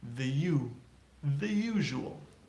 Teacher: the first sound is not a vowel it's a Y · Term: Y sound